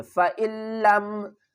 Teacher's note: فا زبر فا، حمزہ کو لام سے ملائیں گے، نون کو نہیں پڑھیں گے کیونکہ تشدید کی پاور زیادہ ہوتی ہے